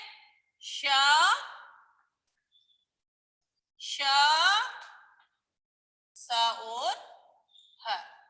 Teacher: जब इन्हें हम बोलते हैं तो हमारे मुख से ऐसा प्रतीत होता है जैसे गर्म श्वास निकल रही है। हमारे मुंह से ऐसा प्रतीत होता है जैसे गरम गरम श्वास निकल रही है, तो इन्हें ऊष्म व्यंजन कहते हैं।